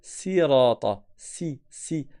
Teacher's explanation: c'est pas emphatique la langue à l'arrière elle est pas relevée. Et dans la lecture de Hafs on prononce avec un sad. · Il y a une autre lecture où c'est avec le sin et on va dire sirata, si. Donc c'est pas emphatique, la langue à l'arrière elle n'est pas relevée